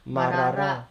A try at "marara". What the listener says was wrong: 马 拉 拉 ， 要 轻 一 点 。 要 轻 一 点 ，